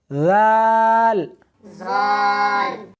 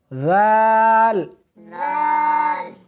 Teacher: دال، اور اس حرف کو سا کی طرح نرمی کے ساتھ ادا کرنا ہے۔ ذال، زال نہیں، سختی نہیں کرنی بلکہ نرمی کے ساتھ پڑھنا ہے